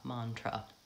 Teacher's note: the first syllable is stressed it has a clear vowel